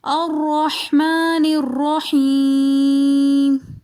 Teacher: الرحمن میں را کو موٹا پڑھیں گے کیونکہ را مشدد مفتوح ہے، یعنی کہ را کے اوپر زبر ہیں۔